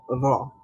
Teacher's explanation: আর রহ মানে যেমন আমরা র বলার সময় যদিও খ এর মতো কম্পন হয় না, ভাইব্রেশন হয় না, কিন্তু তারপরেও এখানে জিহ্বার অগ্রভাগে কিছুটা ভাইব্রেশনের মতোই আপনার তাকরার শোনা যায়, মানে শব্দটাকে ডবল শোনায় অথবা বারবারের মতো শোনায়।